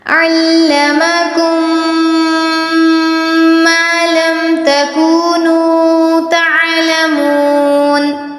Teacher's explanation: میم ساکن کے بعد میم مشدد آیا، یہاں پر ہم نے غنہ کرنا ہے.